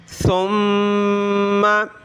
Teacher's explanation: دیکھیں سا پہ زبان نکالنی ہوتی ہے تھوڑی سی